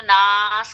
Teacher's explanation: لیکن کیونکہ یہاں تو رکنا ہی رکنا ہے، آخری آیت ہے، اور یہ 6 آیتوں سے مل کر ایک رکوع بھی پورا ہو رہا ہے الحمدللہ، تو ناس کر کے کر دیں گے، مد عارض وقفی ہوگا. یہاں آپ کو پھر ایک الف سے 5 الف تک کھینچ کر پڑھنے کی اجازت ہے